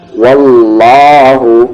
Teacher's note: واللہ یہ ہیوی ہوگا کیونکہ اس سے پہلے زبر ہے. واللہ عندہ حسن، پھر یہاں ملا دیں گے حسن الثواب، بابر قلقلہ، حسن الثواب.